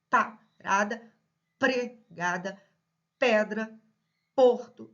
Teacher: E reparem que o P é uma consoante surda. Reparem que o P eu prendo os lábios, né, eles se encontram, eu prendo os lábios para pronunciar o P, né? Parada, pregada, pedra, porto, ó, os lábios se encontram.